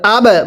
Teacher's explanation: বায়ে সাকিন কলকলা করে পড়তে হবে